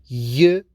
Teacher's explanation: Hard palate, which is in the middle of the roof of the mouth with different ridges, and in this place we produce y sound. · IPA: /j/